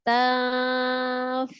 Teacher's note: Tanfa'uhum ada nun sukun ketemu dengan fa bacanya ikhfa, ifanya ifa pertengahan ya. Jadi antara samar dan gunnahnya itu sama.